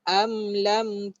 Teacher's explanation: Sama juga kalau kamu sebut am, kamu akan rasa dekat hidung. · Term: makhraj khayshum